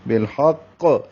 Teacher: لام ساکن پہ اظہار ہے اور ہا وسط حلق سے نکالیں گے. قاف مشدد ہے، ہا کو قاف سے ملائیں گے اور قاف کو پر پڑھیں گے اور قاف پہ قلقلہ کریں گے.